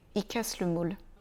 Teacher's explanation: il est très souvent prononcé i à l'oral